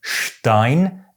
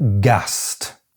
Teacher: because the ST is in the onset, it’s pronounced “sht”